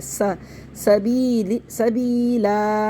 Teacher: سا پڑھنا ہے, اس کو سو نہیں پڑھنا ہے, سو موٹا نہیں کرنا, بہت سے لوگ موٹا کر دیتے ہیں, اس کو سین پڑھنا ہے.